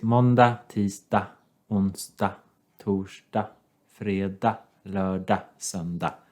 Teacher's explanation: You never pronounce the last G because that's the case in many Swedish words that you use quite a lot.